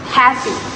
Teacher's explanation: happy is stressed on the first syllable happy. Although the stress placement is the same in both American and British English, black vowel reductions on the second syllables may be heard in some dialects.